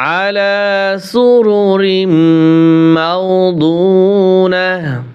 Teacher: আলা, আলা আইন খারা জবর, আইন জবর আ, লাম খারা জবর লা। আলা, আলা আইন গলার ভিতরে চাপিয়ে বলতে হবে।